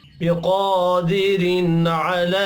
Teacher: क़ाफ के ऊपर खड़ी ज़बर है, एक अलिफ के बराबर खींच कर भी पढ़ना है।